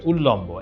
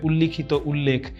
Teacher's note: ত দ এর পর ল থাকলে ত দ এর জায়গাতে ল উচ্চারিত হয়